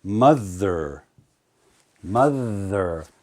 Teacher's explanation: to make that sound right um a word like mother mother I have to use my tongue between my teeth to make the th sound